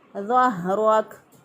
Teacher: हा जो है इसको हम निकालेंगे अक्सा हलक से, यानी गले का वो हिस्सा जो कि सीने की तरफ होता है वहाँ से अदा करेंगे। ज़हरक। रॉ को पुर पढ़ा, रॉ के ऊपर ज़बर है और आखिरी हरफ को साकिन कर दिया।